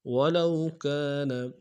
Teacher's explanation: ولو میں واولین بغیر کھینچے پڑیں گے